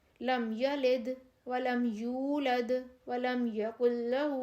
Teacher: لم یلد ولم یولد ولم یکن لہ، میم ساکن آ رہا ہے، میم پہ جزم آ رہی ہے، لیکن اس کے بعد میم اور با میں سے کچھ نہیں ہے، دوسرے لیٹرز آ رہے ہیں، اس وجہ سے ہم اس کو آرام سے پڑھ جائیں گے، غنّہ نہیں کریں گے